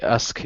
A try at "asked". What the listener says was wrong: Okay, but are you saying ask or asked? Ah, they told me they asked him to sell it.